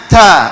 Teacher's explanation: mahroj pangkal ujung lidah nempel ke Pangkal gigi seri atas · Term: huruf Ta